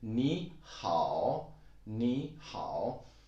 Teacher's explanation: Actually, 你 is a third tone and 好 is also a third tone.